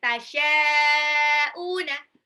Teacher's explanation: shinnya mad wajib mutasil, baca 6 harokat